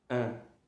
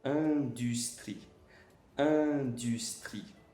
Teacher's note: E o IN, o som de an, mais aberto. An, é como se fosse um an com um sorriso.